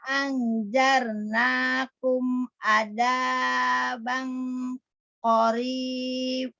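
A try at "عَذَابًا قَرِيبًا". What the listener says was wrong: Inna anzarnakum adzaban qoriba, jangan qoribah ya. Qoriba, jangan dahanya.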